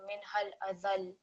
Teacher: Because this is a fatha with a shadda here, when we pause, it's going to take a sukoon, so it will be minhal adhal. So there's going to be a bit of emphasis on the lam because it's still going to have the shadda even with sukoon